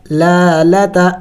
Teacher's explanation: پہلے لام کے اوپر کڑی زبر ہے، اس کو ایک الف کے مقدار کھینچیں گے، دوسری لام کے اوپر صرف زبر ہے یعنی حرکت ہے اور اس کو لمبا نہیں کریں گے۔